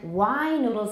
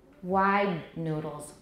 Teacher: why noodles is even longer than wide noodles because it's an open syllable so we have three different lengths depending on what comes after